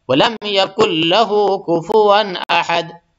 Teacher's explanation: یہ نون جو ہے، یہ نون صرف لکھنے میں آئے گی لیکن پڑھنے میں نہیں آئے گی